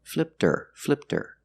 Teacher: we hear the T because with her the H is silent because her is not a stressed word the H is silent so now we have a vowel flipter